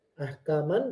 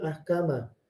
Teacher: Tapi ketika kita wakaf, harakatnya dirubah dijadikan satu. Kalau dia fathah ahkaman jadi ahkama. Kemudian kalau dia kasrah dihilangkan ahkam. Kalau dia domah juga dihilangkan ahkam.